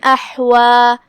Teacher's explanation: تو ہم اسے ایسے پڑھیں گے غثاء احوا. کلمت احوا میں یہاں ہا کو ہم حلق کے درمیان والے حصے سے ادا کریں گے. آخری میں مد طبیعی ہے، لہذا 2 مد کے برابر ہم اپنی آواز لمبی کریں گے.